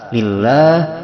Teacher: Lillah hukumnya tarqiq, yaitu tipis dibaca a.